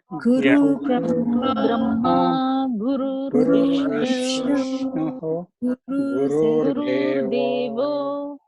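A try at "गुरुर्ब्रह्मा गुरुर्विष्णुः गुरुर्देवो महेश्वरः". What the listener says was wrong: Again, remember here there is a R sound. Okay, Gurur Brahma, Gurur Vishnu, Gurur Vishnu, Gurur Devo Maheshwaraha.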